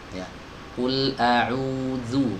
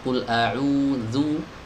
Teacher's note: agar huruf zalnya terbaca benar-benar tipis dan tidak tertukar dengan huruf zo